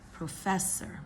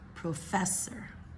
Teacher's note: We're going to stress the second syllable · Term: stressed syllable